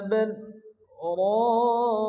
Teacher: বাল বলে হালকা দম আটকে রাখতে হবে, অর্থাৎ শ্বাস ছাড়া যাবে না, এরপর আবার মিলিয়ে পড়তে হবে, একে বলা হয় সাক্তা।